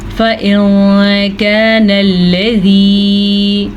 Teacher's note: فَإِن كَانَ الَّذِي, نون ساکن کے بعد حروف اخفا میں سے کاف ہے, تو نون ساکن کو ہم چھپے ہوئے غنّے کے ساتھ پڑھیں گے